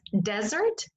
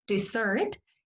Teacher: Uno es desert, que es con el acento en el fondo en la primera sílaba, y el otro es dessert, que es con el acento en la segunda sílaba